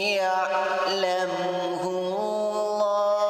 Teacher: lafaz Allah di sini dibaca dengan tebal karena huruf ha yang sebelumnya baru harakat dhammah.